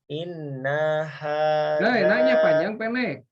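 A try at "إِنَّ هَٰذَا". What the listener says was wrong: Nah, naknya panjang pendek. Naknya panjang pendek. Iya, tuh yang ya kalau yang dibaca pendek jangan dibaca panjang.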